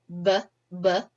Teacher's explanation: so it's voiced you can feel it on your throat BB our lips come together meaning bilabial that's our place of articulation and the air flow is released in a burst and we